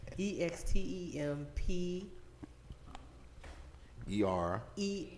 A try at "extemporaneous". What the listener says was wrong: Your first half right. EXTEMPOR. Extemporaneous. EXTEMPORANEOUS. It's 6 syllables. Extemporaneous.